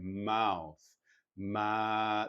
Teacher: there's a hint of ah to it, almost the trap vowel.